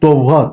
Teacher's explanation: Yəni vurğunu sonda deyirik. Demək ki, vurğu sondadır.